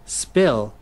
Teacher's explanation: cái âm P và K không bật hơi trong tiếng Anh thì nó có thể có khuynh hướng gần giống với âm P và K trong tiếng Việt